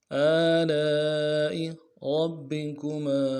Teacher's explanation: کھینچیں گے، حمزہ کو نون سے ادا کریں گے، آلاء ربکما، را کو موٹا کریں گے، با کے ساتھ ملانا ہے ، با کے اوپر تشدید زور دیں گے، اگلے با کو